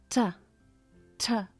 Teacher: em inglês o papel vai se mexer porque vai ter um pouco de ar